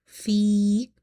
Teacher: Fi, ya is madda, because before ya sakina you have kasra, which makes this ya madda. So we will read by stretching up to one alif.